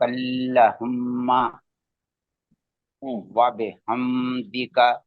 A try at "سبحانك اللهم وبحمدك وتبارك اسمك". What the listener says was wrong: وا بے بے نہیں ہوگا، زبان کو اٹھائیے، بی ہاں، بی اٹھائیے زبان کو بیچ سے.